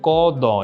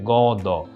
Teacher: প্রথম অঘোষ অল্পপ্রাণ ধ্বনিটা ঘোষ অল্পপ্রাণ রূপে উচ্চারিত হয় অর্থাৎ যেটা ছিল অঘোষ সেটা হয়ে গেল ঘোষ ক যোগ দ